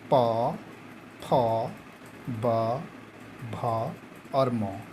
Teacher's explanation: इसका है ओष्ठ, क्योंकि इस वर्ग का उच्चारण स्थान, इसका उच्चारण ओंठ के द्वारा होता है। जब तक दोनों ओंठ आपस में नहीं चिपकेंगे तब तक इसका उच्चारण नहीं होता